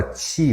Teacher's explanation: você não percebe que você está falando um alofone do T, que é o tchê. Para você é tudo T.